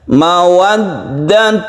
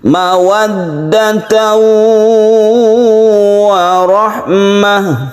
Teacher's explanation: Maka kita panjangkan ketika dia tasydid, ya. Tasydid ini adalah tasydid yang berdengung. · Yaitu kita tekan ke waw atau ke ya di sini. Karena waw itu membentuk huruf u, maka penekanannya itu menjadi tasydid waw yang condong ke u, dan disitulah kita panjangkan.